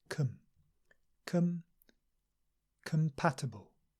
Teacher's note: Com, schwa, relax the lips, relax the mouth